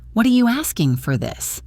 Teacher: Notice also how the G in asking can become very soft.